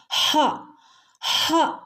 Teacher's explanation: ഈ ഹ വരുന്നത് തൊണ്ടയുടെ അങ്ങേയറ്റം തൊണ്ടക്കുഴിയിൽ നിന്നുമാണ്